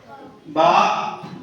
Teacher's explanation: बा दोनों होठों के तर हिस्से से